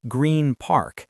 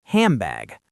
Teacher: To save time, the N transforms into an M, which is also made with the lips. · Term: assimilation